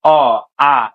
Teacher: তোমার গলা থেকে উচ্চারণ হয়ে বাতাসটা স্মুথলি বের হয়ে যাচ্ছে, কোথাও কিন্তু বাধা পাচ্ছে না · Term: স্বরধ্বনি